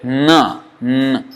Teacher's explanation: see more no no but now you see here dental no you see how much more it is going inside the mouth resonating and then coming out from the nose